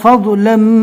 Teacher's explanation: ضاد کو اچھے سے پور پڑھنا ہے